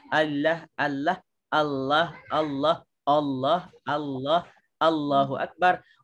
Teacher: Jadi itu bacaan yang tepat sebab lam makhraj dia ialah di hujung lidah, bukannya di bibir